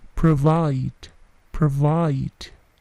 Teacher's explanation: Perhatikan bunyi plosifnya, P tidak terlalu besar